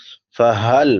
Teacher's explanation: بڑی ہا ہے، حلق کے آخری حصے سے ادا ہوتی ہے جس کو اقصی حلق کہتے ہیں، جو سینے کے ساتھ ملا ہوا ہے۔